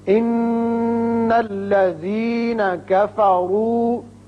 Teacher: نون مشدد ہے، غننے کی آواز نکالیں گے. کفروا میں را کے اوپر پیش ہے، اس کو پر پڑھیں گے.